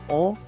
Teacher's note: apabila bibir semi bulat maka terjadilah vokal o